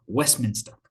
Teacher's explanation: You can't hear the t in the middle. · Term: elision